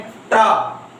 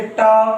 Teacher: जीभ का अगला भाग उलटकर छूता है, यानी पलटी मारता है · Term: मूर्धा